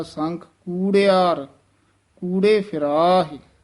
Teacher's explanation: ਕੁੜਿਆਰ ਨਹੀਂ ਉਚਾਰਨ ਕਰਨਾ, ਦਲੈਂਕੜ ਨਾਲ ਉਚਾਰਨ ਕਰਨਾ ਹੈ